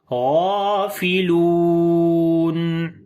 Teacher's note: آواز کو ہلکا سا کنٹینیو کریں گے، غین کو موٹا پڑھیں گے، لمبا بھی کریں گے، کھڑی زبر ہے، لام کو لمبا کریں گے، واو مدہ ہے اور رکیں گے تو مد عارض آ جائے گی.